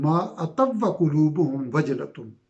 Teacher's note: ما اتوا وقلوبہم، واو پہ تشدید ہے، تو جو آتو کہ واو ساکن کا ادغام ہو جائے گا واو متحرک میں ، تو ما اتوا وقلوبہم وجلۃ، اس طرح پڑھا جائے گا.